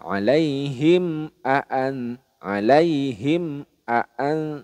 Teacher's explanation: jadi mim sukunnya dibaca jelas tidak boleh di dengungkan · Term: izhar syafawi